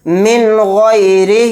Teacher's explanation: غین اظہار حلقی کے 6 حروف میں سے ایک حرف ہے، تو یہاں پر بھی اظہار کا قاعدہ ہوگا. نون کو جلد پڑھنا ہے، اس میں غنہ نہیں کرنا ہے